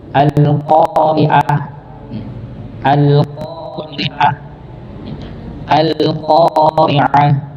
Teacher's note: Ya, al-qari'ah, ri-nya tipis, ainnya. Ya, ini jangan sampai kita membaca huruf ainnya itu hamzah.